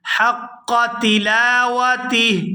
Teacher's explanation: یہاں پر وقف کریں گے تو وقف کی صورت میں ہا جو ہے یہ ساکن ہو جائے گی ، تا کو ہا ساکن کے ساتھ ملا کر پڑھیں گے،